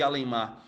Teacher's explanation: Observe que temos um prefixo de duas sílabas cuja sílaba mais forte é a última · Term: prefixo oxítona